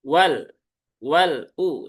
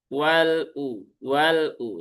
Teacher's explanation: Jadi tawasud itu kan di antara syiddah dengan rakhawah. Ya, jadi dia tidak tertahan dan tidak mengalir.